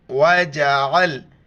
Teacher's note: عین کو گلے سے ادا کریں گے